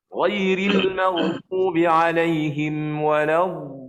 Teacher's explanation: Macam waladdallin itu, setelah kita selesai panjang 6 harakat, maka kita kena ada letak satu suara, iaitu suara yang sedikit tinggi, yang diberi nama suara itu ialah an-nabar.